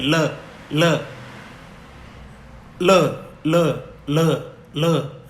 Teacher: जबान का अगला हिस्सा तो मसूड़ों को स्पर्श करेगा और वायु उसके आसपास से निकल जाएगी। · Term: पार्श्विक व्यंजन